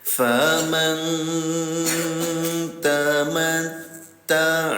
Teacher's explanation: Namanya ika yaitu ikhfa. Cara bacanya samarkan bunyi nun sukunnya ya. Tahan dua harakat tuh.